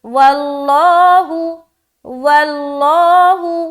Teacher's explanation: واو کے اوپر زبر ہونے کی وجہ سے لفظ اللہ کلام کو موٹا ادا کر رہے ہیں